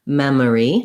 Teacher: Even though it's spelled with letter O, we don't do anything rounded or O-like. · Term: schwa